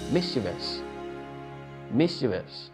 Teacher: So your primary stress is on miss.